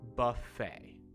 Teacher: you don't say the t at the end of the word just almost like f-a-y it's uh comes from french i believe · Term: silent t